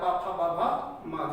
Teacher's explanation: पा फा बा भा मा, जिसको हम ओष्ठ की सहायता से बोलते हैं